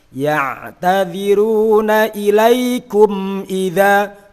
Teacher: Betul, idhar itu secara makna jelas, namun jelasnya bacaan idhar itu tidak sampai menghilangkan sifat dan tetap ada unsur gunahnya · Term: idhar syafawi